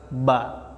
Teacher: Huruf ba, pengucapan huruf ba yang pertama harus tahu makhrajnya. Makhrajnya berada di dua perut bibir sebelah dalam.